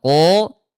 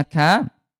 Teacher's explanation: kalau qaf dia jahr tidak ada udara dan isti'la terangkat pangkal lidahnya. Sementara kalau kaf dia ada udara hams ya ka, dan dia istifal turun pangkal lidahnya ko ka.